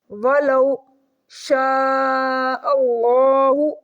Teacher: شین کے ساتھ بڑی مد پڑی ہوئی ہے، مد متصل، اس کو بھی 5 فنگرز کھینچ کے ریڈ کریں گے۔ اللہ کے لام کو موٹا کریں گے۔